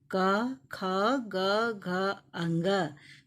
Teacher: इनका उच्चारण स्थान कंठ है, इसलिए इन्हें कंठ्य कहा जाता है